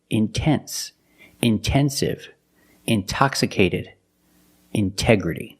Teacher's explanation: The stress is after the NT in these words. So we pronounce the T as a pure T.